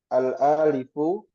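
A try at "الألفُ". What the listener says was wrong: Enggak panjang dia. Al-alifu gitu.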